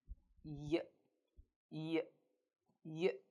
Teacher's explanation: Y is a voiced consonant sound. It means your vocal cords will vibrate when you pronounce it. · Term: Y sound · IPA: /j/